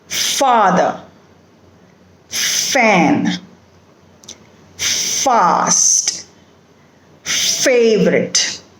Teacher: it is a labiodental sound which means the upper teeth will touch the lower lip